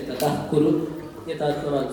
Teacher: So you need to let out some extra air there for ka and ka.